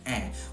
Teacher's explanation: The I vowel has turned into ah because that's the reduction of the glide. For me, my mouth vowel starts at the same place where I say trap and cat and words like that with the short A sound